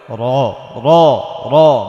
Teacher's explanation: রয়ের উপর যদি জবর হয় তাহলে র র র মোটা করে করে পড়তে হবে